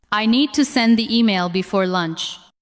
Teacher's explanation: The words need, send, email, and lunch carry the main message.